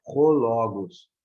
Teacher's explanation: Porque aqui acima do ômicron, nós temos um acento, um sinal diacrítico que indica um espírito áspero. O espírito áspero, ele vai ter este som de H na língua inglesa, né? O H no língua portuguesa é mudo, mas no inglês ele tem esse som, né?